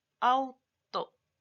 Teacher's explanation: tenemos un diptongo, se da cuenta que hay una vocal fuerte y una vocal débil, y no se separan